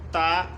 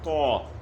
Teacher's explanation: تا کی آواز باریک ہوتی ہے، طا کی آواز موٹی ہوتی ہے